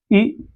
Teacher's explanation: एक बार देखिए ना, तालव्य, तालु का निचला भाग, जीभ का हम लोगों का निचला भाग जो यूज होता है, उससे आप लोग देखिए, हम लोग जब ई का उच्चारण करते हैं तो हम लोगों का तालु, तालु यूज होता है